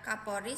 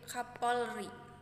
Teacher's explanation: terjadi penghilangan fonem konsonan l pada tengah kata